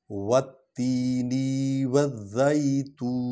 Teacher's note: والتینی والزیتون۔ وا جو ہے وا کو تے کے ساتھ ملائیں گے کیونکہ تے کے نیچے زیر ہے اور تا پر شد ہے